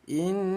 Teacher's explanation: nun yang bertasydid namanya ghunah. Bunyi nun kita dengungkan dua ketukan